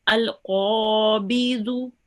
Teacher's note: you rounded your mouth with the qaf here because it's a thick letter, and you prolonged it for 2 seconds